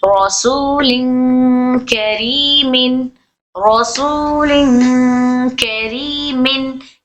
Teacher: रॉ को बारीक पढ़ेंगे क्योंकि जेर है उसके नीचे